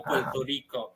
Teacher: en Puerto Rico también que hace la R ahí al final de las sílabas como una L